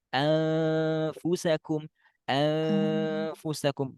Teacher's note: Nggak boleh ini nggak ada ke hidung dan ini salah ya. Harus harus sengau, sengau ya, sengau itu suara ke hidung ya. · ketika kita mengucapkan nun sukunnya, maka bacanya anfusakum, anfusakum, dan harus ada ke hidung. Nggak boleh ini nggak ada ke hidung dan ini salah ya.